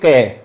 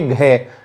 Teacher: घ में अधिक बार कंपन आपको महसूस होगा इसलिए वो क्या है घोष है